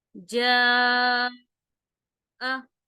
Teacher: वैसे तो हम इसको 2 हरकत पढ़ते, जीम अलिफ जबर जा, लेकिन इसी कलिमा में देखें, इसी कलिमा में आगे हमजा आ गया है, तो अब हमने जा को 4 अलिफ के बराबर लंबा खींचना है, ठीक है। 4 अलिफ के बराबर इसको लंबा खींचेंगे, तो जीम अलिफ जबर जा, हमजा जबर आ, जा आ, ठीक है।